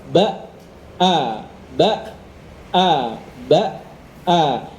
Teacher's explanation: Setelah ba nutup, begitu ada hamzah yang berharokat fathah, dia terpisah.